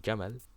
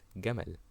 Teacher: how Egyptians pronounce the letter jim as a g sound. Instead of saying jamal, a camel, it is gamal.